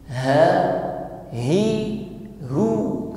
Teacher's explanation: kita sempurnakan dulu sifat pada huruf ha, yaitu hamas dan rokhawah. Cirinya bagaimana? Suaranya mengalir.